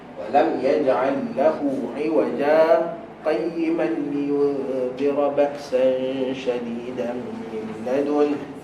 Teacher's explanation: 2 harakat. Maka saktah pun diletakkan minimum berhenti tanpa nafas 2 harakat.